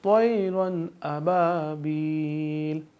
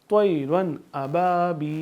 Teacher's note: हरूफ इजहार में से हमज़ा या अलिफ जैसा ये आ गया, तो यहाँ पे हम नाक में आवाज़ नहीं लेके जाएंगे